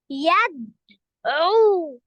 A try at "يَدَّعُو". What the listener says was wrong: لا انتبه، الخطأ اللي عندك ان انت قرأت الدال كأنها ساكنة، قرأتها مع اللي قبله. انتبه، هي الدال ساكنة ولا الدال. لا، كمان قرأت العين فقط مضمومة، العين عليها شدة. على طول يحضر في عقلك الصورة الذهنية للعين المشددة، إن هي حرفان. يدع.